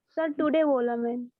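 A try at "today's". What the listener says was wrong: हाँ तो टुडे नहीं बोलना है बच्चे, टुडेज.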